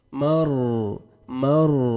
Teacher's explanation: را ساکن سے پہلے فتح ہے, را کو اپنے پر کرنا ہے